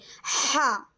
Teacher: ہا ہمارے حلق کے درمیانی حصے سے